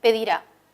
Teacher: Este verbo es agudo, el acento está en la última sílaba, pedirá. Ese verbo no podemos cambiar el acento, no podemos decir pedirá o pedirá.